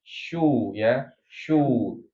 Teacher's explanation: Kecuali memang dalam kondisi dammah. Kalau dalam kondisi domah maka syin itu e artinya harus dimonyongkan ya.